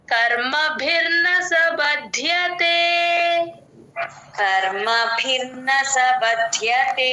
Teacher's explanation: కి ఇక్కడ యూజువల్ గా చేసే మిస్టేక్ ఏంటంటే భ కి మహాప్రాణం పెట్టేస్తారు ఇక్కడ బ కి మహాప్రాణం లేదు ప్లేన్ బ ఓన్లీ ద కి మాత్రమే మహాప్రాణం